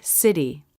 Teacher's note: it's a slap the tongue is in position for the vowel watch how it flaps against the roof of the mouth quickly the air doesn't stop that flap was fast even in slow motion let's watch again